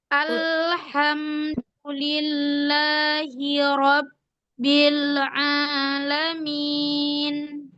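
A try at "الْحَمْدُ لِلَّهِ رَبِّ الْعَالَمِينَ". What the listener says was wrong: Ya, lamnya masih ngayun. Ya, lamnya nggak ngayun, ainnya tidak ada bainiyah. Lam ainnya ada bainiyah, lamnya ngayun. A, U, bukan A, tapi A. Kemudian huruf-huruf qalqalah yang tasdid ba, dal, dan jim itu ditekan.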